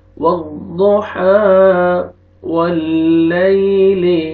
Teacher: یا لین ہے، یا جزم سے پہلے زبر ہے، نرمی سے ادا کریں گے